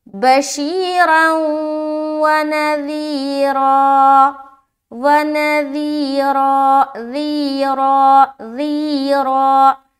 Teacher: جب یہاں پر اسٹاپ کریں گے تو نذیرا، را کو موٹا رکھنا ہے اسٹاپ کی صورت میں بھی اور ملاتے ہوئے بھی